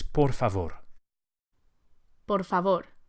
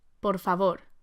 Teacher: Each of the R's is lightly flipped with the very tip of the tongue. Por favor, just behind the front teeth.